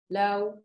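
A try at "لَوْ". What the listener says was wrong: Not low, just low. If you say low, you're making this longer. You're adding an alif in the middle. We would just want it directly. Low.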